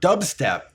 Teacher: The B is very quiet. It almost disappears. That happens because the two consonants together, and the B is made quieter to prepare for the next sound.